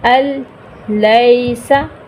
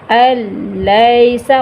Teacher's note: اب اس کی مثال دیکھیے، نون ساکن کے بعد دیکھیں، یہ نون ساکن، اس کے بعد لام آ رہا ہے، ٹھیک ہے، الیسا، نون کو ہم درمیان میں ڈراپ کر رہے ہیں، الیسا، غنہ نہیں کر رہے لیکن ادغام ہو رہا، حمزہ کو ہم رام کے ساتھ ملا رہے ہیں سختی سے، الیسا۔